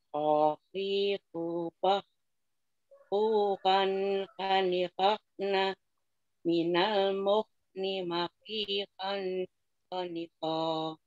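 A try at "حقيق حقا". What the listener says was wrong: Ya, sama Bu, kurang banyak nyangkutnya Bu. Untuk ngepaskan satu-satu aja dulu. Ngepaskan di tenggorokan ya. Kha, khi, khu, bah. Di tenggorokan yang ada apa namanya itu? Di situ yang nyangkut. Nah, ketika nyangkut terus didorong nafas dari dalam, itu pasti bunyi tadi itu ngorok itu. Ya seperti ngorok orang tidur itu ya.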